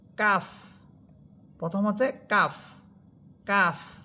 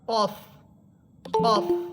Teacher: যে কারণ আমরা কাফ দেখেন আকার দিয়ে পড়তেছি কাফ আর কফ এটা আকার ছাড়া কফ কফ তাহলে এখানে আমরা মাখরাজগত পার্থক্য পাইলাম আর সিফাতগত একটা পার্থক্য পেলাম সেটা হচ্ছে কাফ এটা চিকন হরফ কফ এটা মোটা হরফ